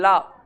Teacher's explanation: जीभ के बगल से निकलती है ला के उच्चारण में। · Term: पार्श्विक व्यंजन